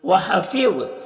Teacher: ظا حروف مستعلیہ میں سے پر پڑھیں گے